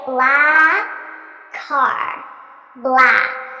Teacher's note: I just eliminate one of the k sounds, and I use it to link these two words together. So I say black car.